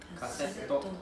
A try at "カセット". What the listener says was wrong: カセット。 It's not double S, it's double T. So it's カセット。Not カセット。Not カセット。So please pronounce carefully. It's double T, not double S.